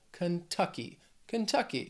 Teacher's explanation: this word has three syllables stress is on that second syllable